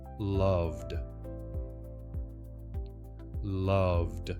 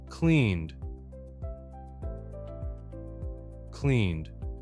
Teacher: the D sound, voiced, one soft beat, no extra syllable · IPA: /d/